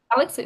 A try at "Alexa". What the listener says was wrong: Alexei, what am I, Russian or what is this? No, it's Alexa with A in the end.